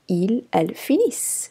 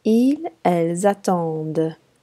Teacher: the final ENT on the ILS, ELLES form is silent